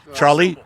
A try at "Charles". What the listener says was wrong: Charles. Just the first syllable.